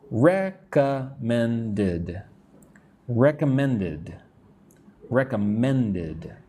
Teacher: Notice like men is where you put the strength